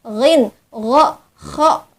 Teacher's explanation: Jadi hamzah ha itu dari aqsal halqi, dari pangkal tenggorokan, ain ha dari wasatul halqi, dari tengah-tengah tenggorokan, dan ghin kha itu adalah adnal halqi, dari ujung tenggorokan